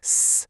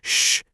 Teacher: if you move your tongue from that alvola ridge just a little bit back, you go from making a S sound to a shh sound